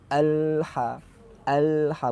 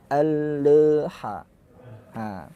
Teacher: lamnya jangan sampai dilepas dulu baru masuk ke ha tapi melepaskannya bersama masuknya huruf ha